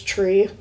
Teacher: they don't pronounce the th sound. So like when you say three, it's tree